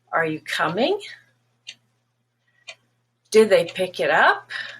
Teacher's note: review first so if you have a yes and no question those are questions that only need a simple yes or no they rise they go up